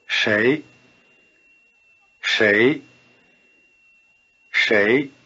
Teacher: You may be hearing shay as beginning with an English SH sound, but there is a slight difference. The tongue is curled back in the retroflex position for the consonant of shay. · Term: R-flavored SH